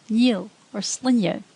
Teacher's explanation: Slender N sounds almost like ny